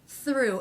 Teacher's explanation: Through, a preposition, a handy little word, begins with the unvoiced TH. The R consonant, thir, and the oo vowel, through, through.